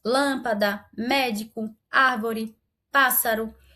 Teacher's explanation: as palavras proparoxítonas, que são aquelas que possuem a antepenúltima sílaba mais forte, elas serão todas acentuadas.